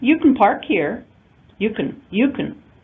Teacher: Notice when I use the affirmative form, you can park here, you can. We use the reduced form kun, unstressed reduced vowel.